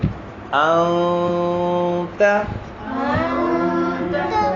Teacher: جب نون ساکن یا تنوین کے بعد یہ حروف آ جائیں تو ایسی نون ساکن یا تنوین میں کیا ہوگا, اخفا ہوگا. ناک میں آواز چھپائیں گے, ناک میں آواز چھپائیں گے. ایک الف کی مقدار